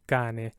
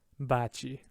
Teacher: because it's in front of i so it gets the soft chu sound